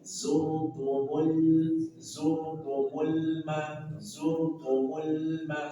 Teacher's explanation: Lam sukun punya sifat baini atau tawassut, sedikit alirkan. Zurtumul ma, sedikit alirkan.